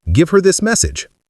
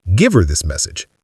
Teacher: Him, her, them often lose their h sound and blend with the verb.